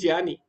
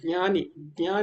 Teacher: होता वो ज ञ या यानी नासिका से आपको बोना है ना नहीं बोलना ञ बोलना है नासिका से